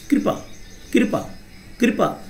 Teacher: कृपा में जो री की मात्रा उसमें भी ह्रस्व स्वर की तरह ही समय लग रहा है